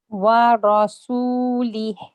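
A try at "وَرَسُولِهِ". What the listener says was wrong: So the wow and the scene, the ra is not too bad, mashallah. The wow and the scene can be lighter.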